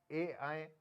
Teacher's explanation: कंठ से और तालु से सटे हुए तब आवाज निकलती है इनकी, तो इसलिए इनको ए को हम कंठ तालु भी कहते हैं या कंठ तालव्य कहते हैं।